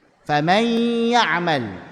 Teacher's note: masuk ke ya tapi kok ada gunnahnya, padahal ya nggak punya sifat gunnah. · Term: idgham naqis